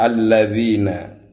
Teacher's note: alnya dibaca asyamsiyah karena ada al ketemu dengan lam